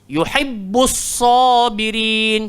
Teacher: Isti'la, huruf tebal. Istifal huruf nipis. Jadi sad kena gemuk.